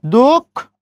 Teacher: তাহলে একই নিয়মের ভিতরে আমরা যদি বলি দুঃখ, তাহলে কেমন হবে? 10 করে 2, বিসর্গের পরে খ আছে, খর উচ্চারণ 2 বার